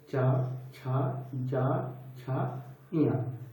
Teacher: ये सबको तालव्य वर्ण कहते हैं क्योंकि इसमें हमारी जो जीभ है वो तालु को स्पर्श करती है।